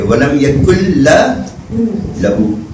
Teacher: نون لام میں مدغم ہو جائے گا اور لام پڑھا جائے گا بغیر غنہ کے